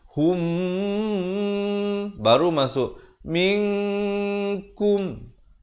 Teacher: Yatawallahum. Di sini mim mati bertemu mim, hukumnya idgham mislain saghir, dibacakan dengan dengung 2 harakat.